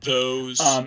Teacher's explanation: the way I just said those a moment ago was with a stop at the beginning, and a dental stop. Those. Which is a fairly typical transformation to make in different varieties of English to change interdental fricatives into dental stops or alveolar stops.